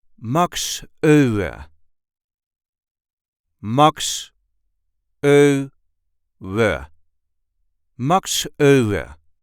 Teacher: There is a light emphasis on the first syllable of his last name.